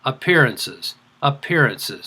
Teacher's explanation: did you hear the stressed syllable it's the second syllable correct the third syllable the one right after that is the unstressed